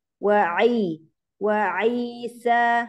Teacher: Huruf ain, perjelas lagi. Makhrajnya dipaskan lagi ke tenggorokan tengah.